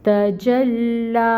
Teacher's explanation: تا کے اوپر فتحہ کی حرکت 1 کاؤنٹ، جیم فتحہ کی حرکت 1 کاؤنٹ، لام مشدد ٹائم ٹیکنگ، اور لام کے اوپر کھڑی مد 2 کاؤنٹس کے برابر۔